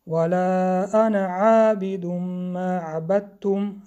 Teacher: در حالت پیوست خواندن الف خوانده نمیشد. اون علامتی که در بالای الف گذاشته شده است این علامتی آن است که الف خوانده نمیشد در حالت پیوست کردن.